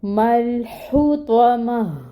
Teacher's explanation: اس تا کو ہا میں بدل دیں گے، اور اس ہا کی جو ہے وہ ہمس واضح کریں گے